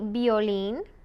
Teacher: the V is more like a b uh it's a soft B